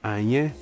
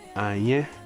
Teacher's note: So we have anye, and then we have that agreement a that we've just gone through, anye, so a low tone and a high tone to finish with